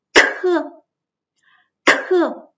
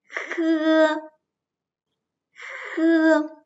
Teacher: Cuống lưỡi để lên ngậm mềm và hơi từ dưới cổ họng đi lên rồi ra bên ngoài. Ở đây có sự ma sát.